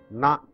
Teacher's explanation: Bend your tongue, take it up, touch the alveolar and pronounce it, retroflex na.